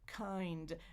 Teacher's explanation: So my tongue is already forward at the end of the I sound. It just needs to go up to the bump or the ridge.